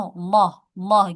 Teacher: Nah, lafaz ee Allah itu apabila di awal atau di huruf sebelumnya berharakat fathah atau dammah, maka lafaz Allahnya itu dibaca tafkhim atau tebal